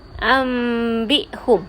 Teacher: Cara bacaan dia seolah-olah jadi bunyi mim. Ambihum. Nun sakinah itu ditukarkan bunyi kepada bunyi mim. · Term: iqlab